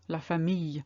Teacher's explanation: if you look at Familia there is no l sound that you can hear because it's the whole I double that makes it yeah so